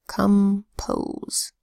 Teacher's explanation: Come is an unstressed syllable, so the vowel there actually sounds a little more like a short U. It's a schwa sound.